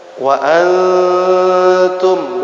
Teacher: nun mati tanwin bertemu dengan salah satu huruf ikhfa, maka cara bacanya dikhaysumkan atau dipangkal hidungkan